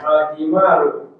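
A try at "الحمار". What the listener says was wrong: Sahih.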